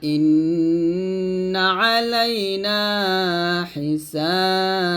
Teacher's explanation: নুন আসলে জিহ্বার আগা উপরে তালুর সঙ্গে লাগিয়ে গুন্নাটা করবেন ইন্না আলাইনা হিসাবাহুম এরকম ভাবে আপনারা পড়বেন